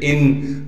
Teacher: حمزہ نون زیر ان، نون پر تشدید ہونے کی وجہ سے غنہ کریں گے یعنی ناک میں آواز کو لے کر جائیں گے